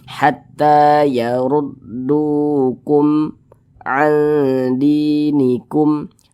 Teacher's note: Ini mim sukun, setelahnya huruf ain, bukan huruf ba, bukan huruf mim, ya hukumnya izhar syafawi. Dibaca jelas, tidak berdengung.